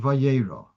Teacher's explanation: Like in the word Vayera, the Aleph, you don't hear the Aleph sound. But without the Aleph, you would have pronounced it perhaps Vir.